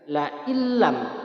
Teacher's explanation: Cara membacanya dimasukkan tanpa didengungkan. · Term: idgham bila gunnah